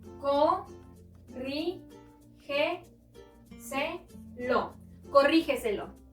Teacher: Encontramos la sílaba tónica en ri.